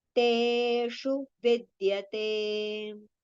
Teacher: Over here, te we have to prolong. Shu, sha murdhanya sha, and with a short u vowel sound.